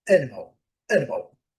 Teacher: E o último a bem fraquinho